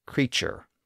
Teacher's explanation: word creature which would have originally been pronounced more like cure the modern form creature obviously has a CH sound in place of that original t sound